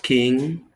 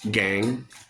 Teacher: Ke is voiceless, ge is voice. Both are a velar plosive